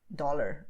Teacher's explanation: there's a lot of contact between your tongue and your teeth